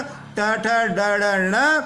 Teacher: ये मूर्धा से उच्चारित होते हैं